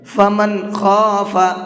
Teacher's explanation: یہاں نون کو ظاہر کر کے پڑھیں گے، صاف صاف پڑھیں گے، اس لیے کہ نون ساکن کے بعد میں خا ہے۔ خا اظہار کے حرفوں میں سے ہے۔